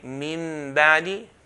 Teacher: Mim and Ba both come from the lips.